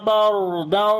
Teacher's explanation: را کو یہاں پر بھی موٹا پڑھیں گے، اس کے اوپر زبر ہے اور لمبا بھی کریں گے، الف مدہ ہے، اور جب رکیں گے تو ایک زبر پڑھی جائے گی، یہ الف مدہ بن جائے گا۔